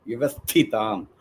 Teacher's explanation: So vyavasthitam, vyavasthi, that tha you have to give that stress.